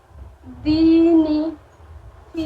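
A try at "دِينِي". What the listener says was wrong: کھینچنا ہے، دونوں کو کھینچنا ہے. دینی.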